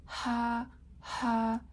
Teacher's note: do you feel the air is kind of making friction in your throat yeah that's the glottal place of articulation okay so those are